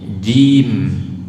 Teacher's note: Jangan sampai cim. Nah, jim dari tengah lidah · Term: huruf jim